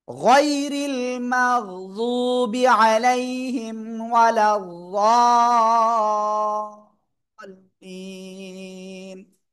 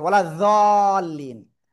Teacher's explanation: জিব্বার গোড়ার কিনারা উপরে মাড়ির দাঁতের গোড়ার সাথে লাগিয়ে উচ্চারণ করতে হয়।